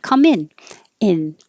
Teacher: more casually you can take off the ng and change the vowel from eng to in